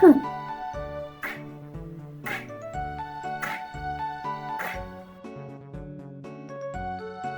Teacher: Кінчик язика опущений і відпочиває унизу. Спинка язика піднімається догори і ніби стукає в м'яке піднебіння. Боки язика торкаються верхніх зубів. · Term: звук К